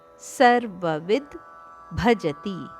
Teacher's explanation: ವಿಯ ನಂತರ ದ ದ ಉಚ್ಚಾರಣೆ ಅರ್ಧದಷ್ಟು ಅದಕ್ಕೆ ಮಹಾಪ್ರಾಣ ಭದ ಒತ್ತು ಸರ್ವವಿದ್ಭಜತಿ ಇಲ್ಲಿ ವಿಯ ಮೇಲೆ ಆಘಾತ ಇದೆ ಆದ್ದರಿಂದ ದಕ್ಕೆ ಸ್ವಲ್ಪ ಒತ್ತುಕೊಟ್ಟು ಹೇಳಬೇಕು